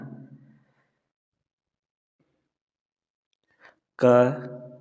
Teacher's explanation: क अघोष अल्पप्राण ध्वनि है।